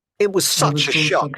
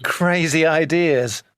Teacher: we make sure we stress the word such and so